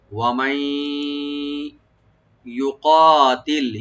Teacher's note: মাই এখানে মিম ওপেন রেখে নুন সাকিনের পর যেহেতু ইয়ে আসছে, এখানে আমরা ইদগাম উইথ গুন্না করবো